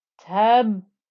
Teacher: when I join into a ba with the shadda, I get tab with my lips pressed together